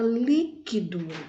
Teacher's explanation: Vejamos aí que o exemplo de uma palavra que seja proparoxítona, a palavra líquido. A palavra líquido tem uma sílaba forte, o li.